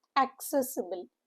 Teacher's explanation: Stress is on the second syllable among the four syllable word.